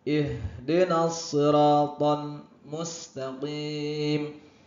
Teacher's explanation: H itu dari pangkal tenggorokan atau tenggorokan paling dalam. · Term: H dada